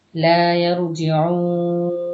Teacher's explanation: এটাও মাদ্দে আরজি 3 আলিফ টান দিবেন কারণ মাদের হরফে বামের হরফে আমরা ওয়াকফ করতেছি লা ইয়ারজিউন আও